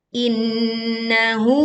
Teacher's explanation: nun bertasydid dibaca dengung sempurna, tidak tergesa-gesa